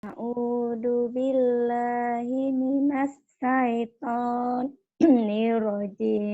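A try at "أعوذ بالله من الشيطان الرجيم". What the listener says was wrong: Shinnya mana? A'udzu billahi minasy shin. A'udzu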